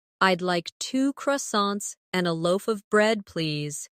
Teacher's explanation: In connected speech, loaf of sounds like loafa.